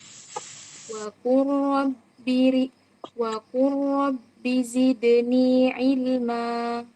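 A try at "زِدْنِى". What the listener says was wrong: Disempurnakan dulu makhrajnya zai. Zidni.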